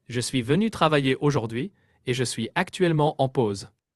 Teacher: Make the L sound lighter, like actuel.